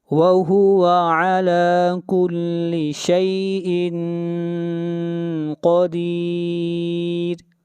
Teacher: قاف کو موٹا پڑھیں گے، قاف حروف مستعلیہ میں سے ہے اور را کو یہاں پر باریک پڑھا جائے گا